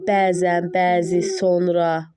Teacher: Normalda uzanan saitlə vurğu üst-üstə düşmür, amma o sözlərdə düşür. Bəzən, bəzi, sonra, hətta bu kimi sözlər var ki, onlarda uzanan saitlə vurğu üst-üstə düşür.